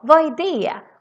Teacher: We ignore the d's in the end of some words.